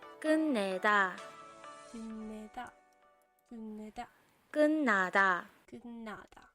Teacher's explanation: In these words, the t sound changes to n